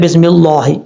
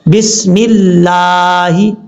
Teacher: لفظ اللہ سے پہلے میم کے نیچے زیر ہے, وہاں پہ بھی بریک پڑھا جائے گا لفظ اللہ